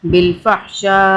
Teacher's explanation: آگے ہم رک گئے تو ہم نے حمزہ زیر ای نہیں پڑھا